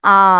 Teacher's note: নিম্ন স্বরধ্বনি। আ, জিভ একদম নিচের দিকে।